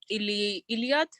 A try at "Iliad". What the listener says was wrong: Iliad. Yeah, that's correct.